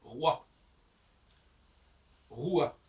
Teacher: On entend, il y a écrit O, j'entends O, boy. Si je dis roi, ROI, j'entends pas le O. C'est plutôt un U ou un W.